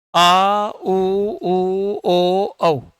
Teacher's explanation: इनका उच्चारण करने में जीवा का पीछे वाला भाग सक्रिय रहता है तो पश्च स्वर हो जाएगा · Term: पश्चेश्वर